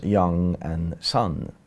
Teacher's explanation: the vowel got unrounded and today we pronounce the words as young and Son